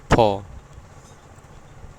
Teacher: तो क्या जाएगा, ये ओष्ठ सट रहा है। फ बोलने पे आपके दोनों ओठ क्या हो रहे हैं, सट जा रहे हैं थोड़े से टाइम के लिए। फ ऐसे, ठीक है।